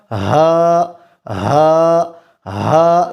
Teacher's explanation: کہہ رہے ہیں کہ اقصی حلق سے ادا ہوتا ہے۔ ہا اقصی حلق سے ادا ہوتا ہے